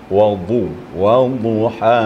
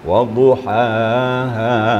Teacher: Dotnya sifatnya istitalah juga. Istitalah itu memanjang di sekitar geraham kita. Waduhaha. Jadi geraham pipi pinggir lidah itu main ya.